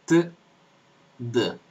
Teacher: estas consonantes en en castellano así como en italiano son dentales no alveolares son dentales